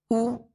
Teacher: पेश को जब अदा करेंगे तो दोनों होंठों को कामिल गोल करेंगे